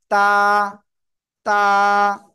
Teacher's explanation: জিহ্বার আগা উপরের দুই দাঁতের গোড়ায় লাগাবো লাগিয়ে আমরা এক লিফটে টেনে উচ্চারণ করবো